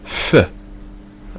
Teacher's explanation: it's a f that's made with both lips